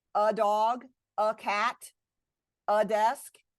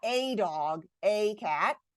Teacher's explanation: We don't stress it. We give it that schwa sound.